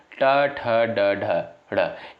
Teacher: इनका उच्चारण होता है आपका मूर्धा से।